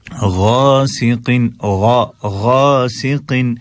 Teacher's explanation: ومن شر ویسے ہی جیسے پہلے پڑھا، غاسقن میں گا سکن نہ پڑھیے گا، گاف نہیں ہے، غین ہے. غا آپ کی جو زبان کی جڑ ہے، یعنی کہ ہمارے حلق کا ابتدائی حصہ، وہاں سے ہم اس کو ادا کریں گے